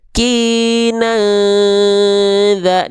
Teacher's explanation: kina za ditahan dulu 2 harokat dengungannya. Miskina za, za tuh 2 ketukan, 2 ketukan.